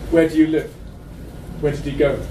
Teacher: So the pattern of big, small, small, big is the result directly of grammar being pronounced. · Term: train rhythm